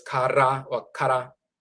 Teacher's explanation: The tongue taps the roof of the mouth once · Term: rolling R